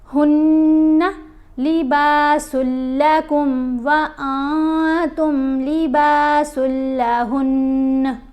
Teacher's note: نون کے اوپر غنہ ہے، غنہ کیسے کرتے ہیں؟ یعنی آواز ناک میں جاتی ہے اور ایک حرکت کے برابر ٹھہر کر پڑھا جاتا ہے